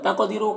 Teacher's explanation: क़ाफ को पुर पढ़ेंगे और कलकला करेंगे